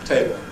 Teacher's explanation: What do we do with a word like ‘table’? In isolation, Dark /l/ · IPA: [ˈteɪbɫ]